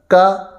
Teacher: کاف یہ زبان کی جڑ اور لحاظ کے قریب جو تالو کا نرم حصہ تھا اس سے تھوڑا سا آگے آئیں تو تالو کا سخت حصہ ہوتا ہے. تو زبان کی جڑ تالو کے سخت حصے سے جب لگے گی تو وہاں سے کاف ادا ہوگا، باریک پڑھا جائے گا. اس کو ہم نے موٹا نہیں پڑھنا.